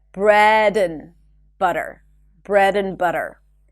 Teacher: the word and, it will be reduced to n, and you want to connect it